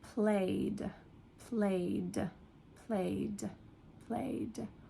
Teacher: at the end, it's more like a D or a T, a very soft sound at the end. It does not sound like ed, so it's not liked, played.